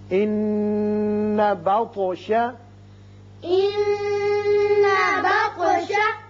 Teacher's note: نون مشدد ہے، غنہ کیجئے، اور طا ساکن ہے چونکہ اس لیے اس کی صفت قلقلہ ادا کریں گے